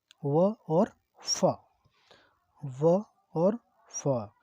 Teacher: दांत से भी बोले जाते हो, और ओष्ठ से मतलब ओठ से भी बोले जाते हो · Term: दंतोष्ठ